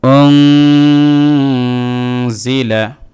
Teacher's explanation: অতএব রামাদানাল্লাযী তিন আলিফ হামজা নুন পেশ ওং জাজের জি লাম জবল্লা ওং জিলা নুন সাকিনের পরে যা আসছে ইখফা অক্ষর, ইখফা হয়েছে এই জায়গায়। অতএব নুন সাকিনের উচ্চারণটাকে নাকের ভিতরে নিয়ে গুণনা করে পড়তে হবে এক আলিফ। ওং জিলা ফায়াজের ফি হাজের ফালামদের হিল ফি হিল জেরে বাম পাশে জজম ওয়ালা ইয়া দেখতে পাচ্ছেন, এই জন্য এখানে মদের হরফ হয়েছে এক আলিফ টান দিতে হবে।